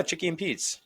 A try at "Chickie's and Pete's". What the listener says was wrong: Chickies and Pete's. say it wrong. Chickies and Pete's. Both of them with S's.